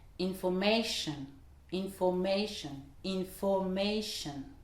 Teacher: Par exemple, information, 4 syllabes, c'est la suffixe ion. Donc, l'accentuation se fera juste avant sur le ma.